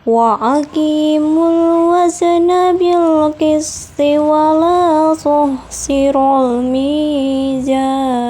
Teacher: mad tabi'i pada la sehingga dibaca panjang 2 harokat · alif lam qamariyah pada almi sehingga huruf lam dibaca jelas. Yang keenam, matobi'i pada mi dalam kata al-mizan sehingga dibaca panjang 2 harokat. · mad tabi'i pada ki dalam kata aqimu sehingga dibaca panjang 2 harokat